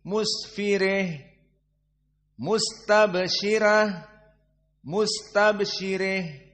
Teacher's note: Maka semua hak ta'nits dibaca dalam keadaan al-imalah al-kubra.